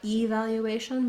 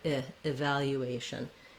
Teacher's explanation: first syllable, letter E, is unstressed and it sounds like an I. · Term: reduced vowel